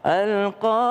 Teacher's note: Ba kalau berada di akhir kalau kita berhenti menjadi qalqalah.